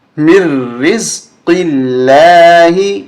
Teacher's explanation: یہاں لفظ اللہ کی درمیانی لام باریک ہوگی اس لیے کہ اس سے پہلے والے حرف پہ زیر ہے زبر اور پیش ہوتی تو موٹا کر کے ہم پڑھتے یہاں